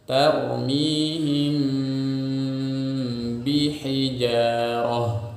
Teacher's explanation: Nah, cara membacanya adalah syafatain kita berada di makhraj huruf ba, tarmihim. Kemudian ketika makhraj atau alat ucap kita berada di huruf ba, maka disertai dengung yang muncul dari huruf mimnya. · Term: ikhfa syafawi